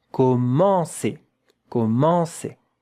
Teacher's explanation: Nasal vowel. There is a bit of air when you pronounce it that has to come out of your nose.